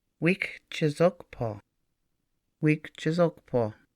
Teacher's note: the K at the beginning joins the first syllable and the I after the K is lost